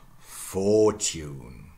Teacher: the loss of R, the stress shifts to the first syllable